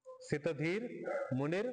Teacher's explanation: दोन्ही मध्ये र र उच्चारण येतोय, अर्धा अर्धा र.